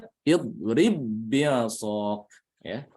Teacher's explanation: qolqolah hilang karena idgham itu menghalangi qolqolah